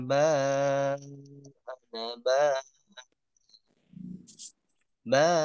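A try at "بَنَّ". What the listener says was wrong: Nah, awas di sini. Nah, di sini ditahan. Ban. Nah, nya harus ditahan.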